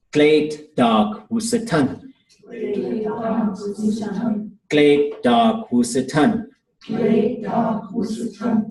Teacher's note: So we see long and low, short and low, short and high.